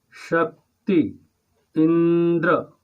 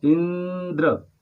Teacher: शक्ति शब्द और इंद्र शब्द में श और ई पर स्वराघात है